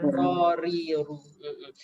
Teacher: Cuma ra ni ada sifat hurufnya iaitu dia bergetar ya. Takrir nama dia ya.